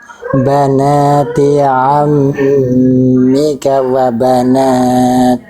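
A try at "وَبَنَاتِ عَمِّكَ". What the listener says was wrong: Oke, hati-hati panjang pendek. Tadi K di sini cukup 1 harokat aja. Tadi sempat kepanjangan sedikit, ya, jadi 2 harokat.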